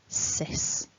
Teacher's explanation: So make sure you're not voicing those s's. It's a nice hissed s, sis, like in sister.